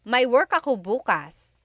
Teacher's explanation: If you say bukas, emphasis is on the first syllable, that means tomorrow.